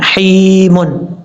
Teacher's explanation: اب آپ نے ہا یا زیر ہی میم دو پیشمن حیمن، یا مدہ ہے کیونکہ یا ساکن سے پہلے زیر ہے تو یا مدہ ہوا، ایک الف کی مقدار لمبا کر کے پڑھیں گے، جب وقف کریں گے تو میم ساکن ہو جائے گا۔